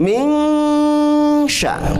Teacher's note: Min sya, kita sudah menemukan di ayat 2 ada nun sukun menghadapi huruf shin. Min sya itu namanya ikhfa haqiqi, berarti harus ditahan 3 harkat.